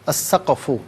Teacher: چونکہ قاف ہے تو قلقلہ ہوگا، ساکن ہے نا.